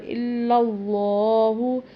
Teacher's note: لام کو لمبا بھی کرنا ہے اللہ والے کو، اور پر بھی پڑھنا ہے کیونکہ پچھلے لام کے اوپر زبر ہے۔ واشہد ان، غنہ کریں